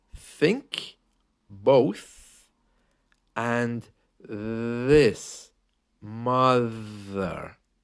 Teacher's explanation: made by putting your tongue just out past your teeth not out of your mouth but just out past your teeth the to leave enough space to vibrate the air through your